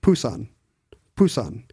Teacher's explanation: would be somewhere between a p and a b pan pan right there's no puff of air